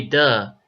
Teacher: often you'll hear them trade out the th sound for the short d sound so so they say duh instead of the in my opinion